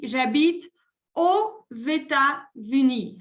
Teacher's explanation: Y cuando la país empieza por vocal, hago la liaison con la X. Y se pronuncia como una Z, la letra Z.